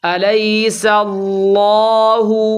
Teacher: اس میں اللہ کا لام خوب پر کرنا ہے